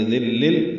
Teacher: پڑھیں گے، تنوین کے بعد لام آنے کی وجہ سے ذل، یہ ادغام کامل ہے، دال لام سے ملا دیں گے